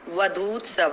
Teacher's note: अब जैसे अवधू दीर्घ ऊ था और उत्सव का ऊ ह्रस्व ऊ है, तो दोनों को मिला के एक दीर्घ ऊ हो गया, तो बन गया वधूत्सव है।